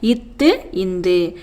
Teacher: மேல்வாய்ப்பல்லின் அடியை நாக்கின் நுனி பொருந்துவதால் பிறக்கும் மெய்யெழுத்துக்கள்